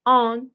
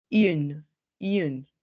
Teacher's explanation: Tengo un fenómeno de denasalización. Ya no se nasaliza.